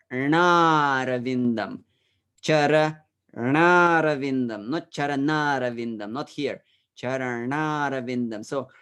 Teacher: i prepare my tongue i touch the alveola the space above the upper teeth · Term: retroflex